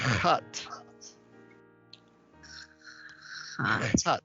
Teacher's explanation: The hardest thing about Hebrew you're doing right now, and it's doing that growling, throaty sound. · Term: het